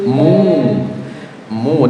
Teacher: ada dommaah diikuti wau sukun namanya bacaan apa Jemaah mad thob'i berarti harus dibaca panjang dua harakat